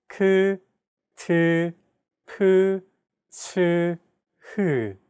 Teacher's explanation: Aspirated sounds are pronounced with a big burst of air, unlike plain sounds which do not have this quality. · Aspirated consonant sounds, on the other hand, have an added turbulent sound.